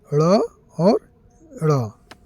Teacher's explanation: जिन वर्णों का उच्चारण करने पर जीभ ऊपर उठकर तुरंत नीचे गिरती है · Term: उत्तिछप्त व्यंजन